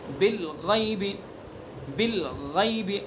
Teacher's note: غین کو پر پڑھنا ہے چونکہ حروف مستعلیہ میں سے اس کی صفت پر ہونا ہے، منہ بھر کے پڑھنا ہے. اور غین کے بعد جو یا ہے یہ یا معروف ہے، اس کو مجہول نہیں کرنا، بالغیب نہیں پڑھنا.